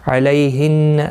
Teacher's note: لی یالین ہے، تھوڑا نرمی کے ساتھ آدھے الف کی مقدار کے برابر کھینچیں گے. نون مشدد پر گنہ ہوگا.